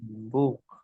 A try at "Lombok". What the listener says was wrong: Lumbuk kan. Misalnya antum bilang, saya dari Lombok. Ana min Lombok saja. Jangan bilang antum ana min Lumbuk. Ya kan? Tapi dibacanya, di lisannya itu sesuai sebagaimananya. Bukan sesuai tulisannya.